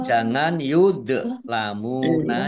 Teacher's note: Wala yuzlamuna, lam fathah alif mat tobi'i panjang 2 harokat. Dzok sukun bukan kolkolah, jangan dipantulkan.